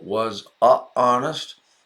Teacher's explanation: it is hard to say because you have a vowel sound butting up against a vowel sound yeah the word honest starts with a vowel sound the H